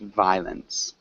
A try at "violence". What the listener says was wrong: Close. We don't really pronounce that O.